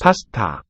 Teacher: first and last syllable here, pa, ta, are aspirates. They have a lot of breath coming out with the stops.